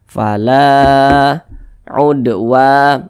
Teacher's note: memiliki tanda baca fathah dia sehingganya huruf lam ini dibaca panjang Mad thi'i panjangnya dua harakat atau kira-kira dua ketukan